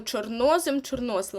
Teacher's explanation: коли у вас слово розпочинається з чорно наголос буде падати на друге о